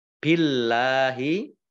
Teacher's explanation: Allahnya dibaca tipis karena harokat di depannya kasrah